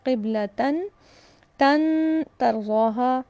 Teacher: تنوین کے بعد تا ہے، نون ساکن اور تنوین کی آواز کو چھپایا جائے گا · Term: اخفا